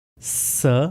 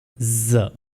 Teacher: Small opening से स एंड ज प्रोनाउंस होंगे। अगर वोकल कॉर्ड्स वाइब्रेट नहीं करेंगे तो इट विल बी स साउंड, और अगर वोकल कॉर्ड्स वाइब्रेट करेंगे तो ज साउंड प्रोड्यूस होगा